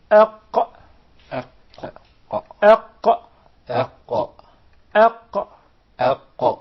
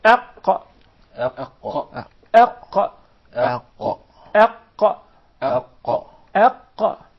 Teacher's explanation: There are several changes that take place in the mouth. The farthest side of the tongue is elevated, and there is a move in the uvula. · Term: Qaf